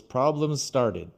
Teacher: started starts with S and problems ends with a Z sound